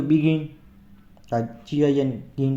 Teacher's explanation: તો આ રીતે 2 સિલેબલ વર્બ્સ જે હોય છે એમાં જે સેકન્ડ સિલેબલ હોય છે તો એના પર ભાર આવે છે.